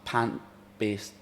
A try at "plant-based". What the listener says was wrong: Plant-based. You said pant. pant-based.